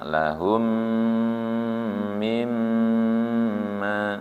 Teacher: Lahum dengung karena mim sukun ketemu mim. Mim dengung lagi karena mimnya bertasydid ya.